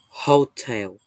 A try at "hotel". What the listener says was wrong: Đúng âm rồi nhưng mà còn nhấn sai chỗ. Hotel.